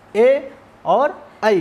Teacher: कंठ तालु, अब कंठ तालु से इनका उच्चारण होता है ए और आई का, इनका उच्चारण स्थान कंठ और तालु के माध्यम से होता है, इसलिए कंठ तालव्य कहे जाते हैं